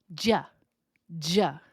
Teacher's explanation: This has a zh sound, sometimes a ch sound. That is the sound of y.